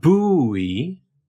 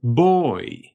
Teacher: This is a rounded vowel that's made with your tongue all the way in the back of your mouth, but a bit further down from oo. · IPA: [oɪ̯]